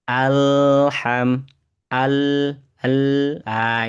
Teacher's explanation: Huruf lam ini ada sifat namanya tawassut ya atau bainiah. Perlu dialirkan sedikit.